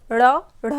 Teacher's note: जब हम इनका उच्चारण करते हैं तो हमारी जो जीभ है वह तुरंत ही मुड़ती है और ऊपर स्पर्श करती है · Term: उत्क्षिप्त व्यंजन